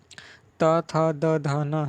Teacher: त, थ, द, ध और न, इन सबको आप बोलेंगे तो आपका जीभ जो है दांत पर टच होता है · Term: दंत ध्वनियाँ